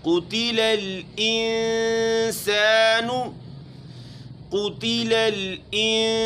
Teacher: قاف کو موٹا پڑھنا ہے اور گول بھی کرنا ہے چونکہ اس کے اوپر پیش ہے